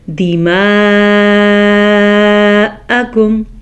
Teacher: اس مد کی مقدار تقریباً 5 حرکات عربیہ کے برابر ہے، تو ہم اس کو 4 سے 5 سیکنڈ تک کھینچ کے پڑھیں گے